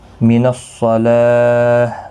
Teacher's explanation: وقف کی صورت میں ہا ساکن پڑھیں گے، وقف بالاسکان ہوگا، 3 سے 5 الف کی مقدار کے برابر کھینچ کر وقف کریں گے